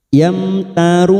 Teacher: Yamtarun. 4 harokat kita panjangkan namanya bacaan mat arid li sukun